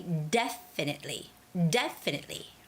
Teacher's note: the word definitely. Definitely. De has the stress. So it's got to be definitely.